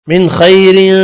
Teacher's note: نون کا اظہار ہوگا، خا یہاں بھی پر پڑھا جائے گا